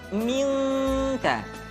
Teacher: Ketemu kaf maka dominan kepada huruf eng, minka. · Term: ikhfa